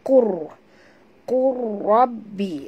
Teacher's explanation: masukkan qaf ini terus terus ke dalam ra tanpa membunyikan lam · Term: idgham mutaqaribain